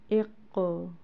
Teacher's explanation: اب یہاں پہ آپ دیکھ رہے ہوں گے قاف دو نقطوں والا ہے، یعنی کہ یہ حلق سے ادا کیا جائے گا، موٹا پڑا جائے گا۔ ساتھ میں اس کے اوپر جو جزم ہے وہ بلو کلر سے دی گئی ہے۔